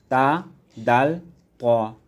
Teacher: জিহ্বার অগ্রভাগ সামনের উপরের 2 দাঁতের গোড়ার সঙ্গে লাগিয়ে পড়তে হয়